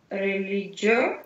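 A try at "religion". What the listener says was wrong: Такое «жё», у нас «джё» нету, «жё», «религио».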